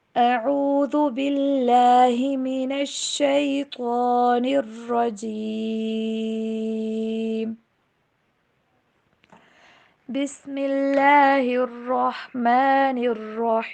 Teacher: تعوذ دین تسمیہ دونوں میں اللہ کا نام باریک پڑھا جاتا ہے، اور لاسٹ کی جو 2 ورڈز ہیں رجیم رحیم، ان دونوں کو لمبا کرتے ہیں